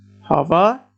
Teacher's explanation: Hava, two syllabled word. The stress goes to the second syllable.